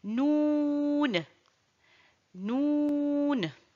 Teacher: sort de l'extrémité de la langue en s'appuyant sur le palais